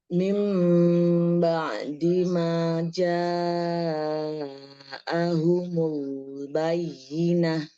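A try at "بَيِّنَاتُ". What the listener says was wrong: Bukan bainah. Itu tak tatnis, bukan tak marbutoh. Tetap tak bayinat. Jadi mata arid dia. Disukun.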